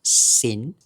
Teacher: Thai Bali has a tendency to drop or weaken the final consonants. It's just the nature of the Thai language itself because Thai language often simplifies syllable endings into open syllables.